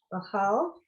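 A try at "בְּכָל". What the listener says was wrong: Be. What's with you guys? Don't like that shava at the beginning. Bechol.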